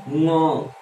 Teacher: तो हवा तो पूरी तो फंस के ही निकल रही है भाई साहब, मुंह के बजाय नाक से निकल रही तो फंस के ही निकल रही है ना।